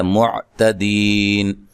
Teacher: تا کو باریک پڑھنا ہے، دی یا مدہ ہے، وقف کی صورت میں مد کر سکتے ہیں